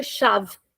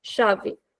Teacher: In European we will finish the word very quickly. We'll say shave. And in Brazilian we will say shave. Shavei. We'll extend it a little bit at the end.